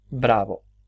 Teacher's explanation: finalmente pronuncia bravo, la primera oclusiva y la segunda expirante